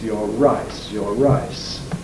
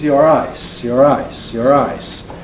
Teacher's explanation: the syllable initial R tends to be made more strongly than the syllable final one.